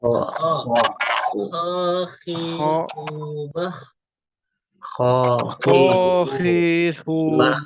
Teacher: Kha juga keluar dari tenggorokan atas.